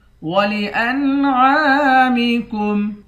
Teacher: عین کے بعد بھی الف ہے، اس کو بھی ایک الف کی مقدار کھینچ کر پڑھیں گے